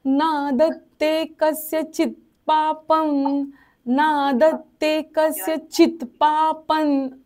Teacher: पच्या वरचा अनुस्वार न उच्चारायचा कारण पुढे न आहे, न नळातला. नादत्ते कस्यचित् पापं न चैव सुकृतं विभुः.